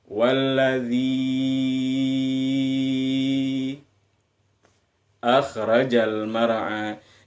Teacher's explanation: Sementara yang di ayat yang selanjutnya itu ada tanda alis. Nah, ingat ketika ada tanda alis, maka panjangnya itu 6 ketukan